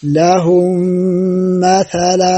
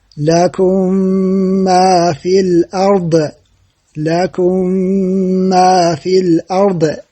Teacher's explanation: الساكنة ከሷ በኋላ ሚም ሲመጣ ምሳሌው ለሁም መተላ እንላለን። ለሁም መተላ ሚም ከቀጣዩ ሚም ጋር ተጨፍለቃለች። ካፍንጫችንም ጉና ይወጣል። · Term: ኢድጋም ሙተማሲለይን